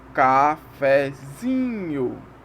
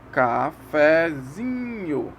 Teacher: a tônica aqui é o zin, a sílaba zin. E o fé é a subtônica. Então vai fazer uma escadinha.